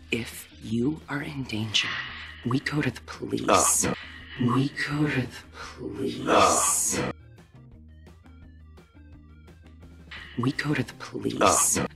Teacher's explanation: the extremely common American native tendency to pronounce the word to as duh